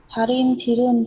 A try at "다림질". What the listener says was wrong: 그 니을 받침을 잘 못했어요. 다림질을 해야 돼요. 다시 읽어보세요.